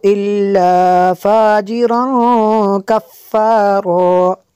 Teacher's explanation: تنوین کے بعد کاف ہے، حروف اخفا میں سے یہاں پہ اخفا ہوگا، اس لیے یہاں پہ غنہ کریں گے۔